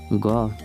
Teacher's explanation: घ उच्चारण स्थानको आधारमा कण्ठ्य हो। घोषत्वको आधारमा घोष हो।